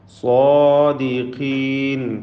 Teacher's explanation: സ്വാദിനും അതിൻ്റെ ദീർഘാക്ഷരമായ അലിഫിനും തഫ്ഖീം കൊടുക്കണം. ഖാഫിന് കസ്റാണ്, കുറഞ്ഞ തഫ്ഖീം മാത്രം നൽകി ഉച്ചരിക്കുക.